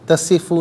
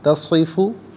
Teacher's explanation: صاد کو پر کر کے پڑھنا ہے، سین کی طرح نہیں